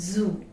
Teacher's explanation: So see the buzzing sound, Z. It is a voiced consonant.